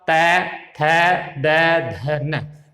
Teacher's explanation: इसके बाद जब आप तै, थ, द, ध, न इसको जब आप बोलेंगे तो आपकी जीभ दांतों से टच होगी।